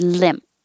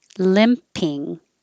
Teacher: if it's the mp you do hear the p when there's a vowel after it